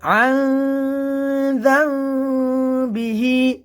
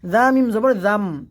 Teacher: এখানে মিম উচ্চারণ হবে, এখানে নুনের উচ্চারণ হবে না। বিহি জাম এই গুণনাটি করার সময়, ইকলাবের গুণনা করার সময় আমাদের ঠোঁটটি হবে যে যেন আমাদের ঠোঁটটি এমনভাবে হবে দুই ঠোঁটের মাঝখানে এক কাগজ পরিমাণ ফাঁকা থাকবে।